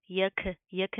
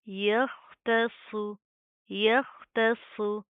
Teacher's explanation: تا باریک، خا اور صاد دونوں موٹے پڑے جائیں گے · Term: موٹے حروف